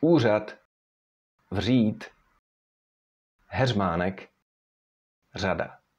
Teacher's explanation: R is voiced if it stands between vowels